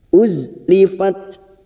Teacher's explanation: Zain sukun kita tahan dan biarkan suara itu berlalu secara Hames dan rikhwah